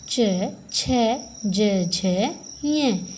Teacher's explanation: च, छ, ज, झ, ञ। ये तालु से, तलवे से बोले जाते हैं। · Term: च वर्ग